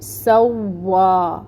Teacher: واو کو 2 حرکت لمبا پڑھیں گے اور واو پہ ٹائم ٹیکنگ ہوگا